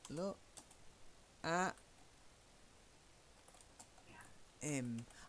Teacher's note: dropping your H for him him oh look at him look look at em I'm warning